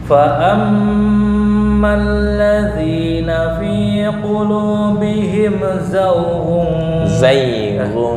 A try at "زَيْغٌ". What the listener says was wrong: bukan zawgun. Zayghun.